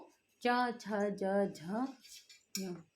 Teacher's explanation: च छ ज झ हमारे तालव्य पे जो है स्पर्श कर रहे हैं, और उसके साथ ही जो है इन्हें बोलने में थोड़ा सा एनर्जी लग रही है, तो इसीलिए च छ ज झ झ स्पर्श संघर्षी कहलाते हैं।